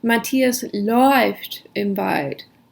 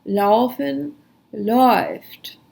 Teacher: Laufen takes the umlaut and it changes the sound to oi.